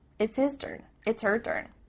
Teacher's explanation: the H at the beginning of his and her is cut off we don't do this all the time but it does happen